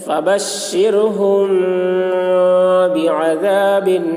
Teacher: میم ساکن کے بعد با آ رہا ہے اس لیے غنہ کے ساتھ اخفا ہوگا، اس کو اخفاء شفوی کہتے ہیں۔